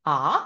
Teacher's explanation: otrais tonis iet uz augšu viņš it kā pacēļas un tas būs a it kā jūs gribat uzdot jautājumu a